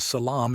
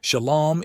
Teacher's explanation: the Canaanite shift a long a that turns into O